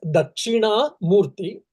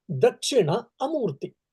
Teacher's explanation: In the first Dakshina, Na is a long vowel or the Dirga Swara. Here Dakshina means Rasva, short vowel.